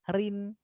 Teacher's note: Jadi di sini ada ro di kasroh, ri, ringan banget ucapkannya gitu ya. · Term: ro tarkik